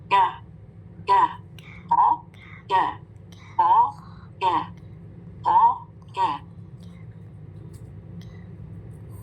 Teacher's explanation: लगाया जबान की जड़, फिर आपने जो ऊपर सख्त हिस्सा उसको लगाए जबान की जड़, तो काफ अदा होगा